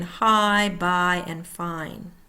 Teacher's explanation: The A or long I sound, A-I, with A-Y and A-J in some phonetic notations in Canada. Tongue starts low, jaw dropped, and tongue moves high front, heard in high, by, and fine.